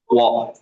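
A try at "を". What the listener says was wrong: Bukan wo, o. Nulisnya memang Akasatana Hamaya Rawa, tapi dia dibacanya o ya, bukan wo ya. Aisatsu o ya, o. Aisatsu o.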